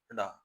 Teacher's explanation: डा वर्ण मूर्धन्य अल्पप्राण घोष वर्ण व्यंजन वर्ण का उदाहरण है।